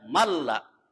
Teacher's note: Kemudian malla, tulisannya manla, dibacanya malla. Itu ada nun sukun atau nun mati bertemu dengan lam. Hukumnya dibaca idgham bila gunna. Idgham bila gunna artinya masuk tanpa dengung.